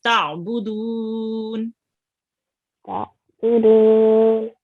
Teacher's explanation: Try to pronounce the ain from the middle of your throat.